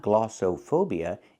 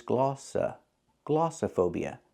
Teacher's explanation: o like no and go it's not glossophobia it's glossa glossophobia the O in the middle makes a short uh sound · the O in the middle is not pronounced with a long o like no and go